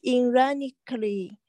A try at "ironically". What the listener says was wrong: 就是它的意思就讽刺的是一般的用这个词的时候，它就会表达相反的这个意见，相反的观点。Ironically, yeah, here, not E, I, ironically.